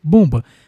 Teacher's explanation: Aqui nós temos uma paroxítona com vogal nasal formada por OM.